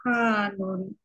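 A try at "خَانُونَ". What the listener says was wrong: Nah, hati-hati apa jangan sampai hana ya, tapi khonun.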